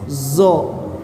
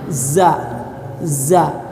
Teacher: Jadi ujung lidah yang depan ke langit-langit, za. Kalau zo mah ujung lidah kena ke ujung gigi, zo. Ya.